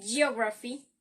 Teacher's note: Words ending in graphy, shan, ik, chan, ickle, and ity has the stress before the last syllable. Like here in geography, the stress is in the first syllable